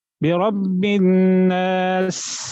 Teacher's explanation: سین اس میں اس کی جو صفت ہے وہ ہے سٹی